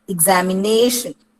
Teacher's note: A word like examination, ig എന്നാണ് ഉച്ചരിക്കുന്നത്, ഇ എന്നാണ് ആദ്യത്തെ sound, examination. So if you have the word examination, it is the second last syllable which is stressed